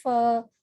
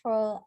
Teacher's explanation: when we pronounce hindi fur we use both the lips but when we pronounce english fur we use upper teeth and lower lip